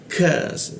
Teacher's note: Jadi ada hembusan udara ketika membaca huruf ka ya.